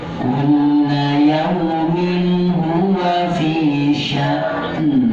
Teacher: Hamzahnya tetap ada, jangan buru-buru, diam dulu sejenak pada hamzah sukun, langsung kayak ada suara menuju ke en.